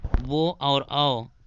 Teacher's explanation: वो और औ ये जो है ये कंठोष्ठ से बोले जाते हैं